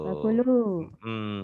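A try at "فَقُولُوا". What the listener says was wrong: Kurang cepat di situnya. Emang nggak niat panjang itu nggak niat, cuman ketahan. Jadi kayak ada mad. yang panjangnya lu-nya ya, ku-nya enggak.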